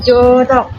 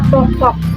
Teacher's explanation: Nah itu lidah kita berada agak rendah berada di antara bawah dan atas tetapi mendekati ke bawah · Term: bunyi agak rendah